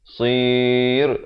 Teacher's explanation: rohnya jadi nipis. Jangan baca tebal, sir, itu tak betul ya.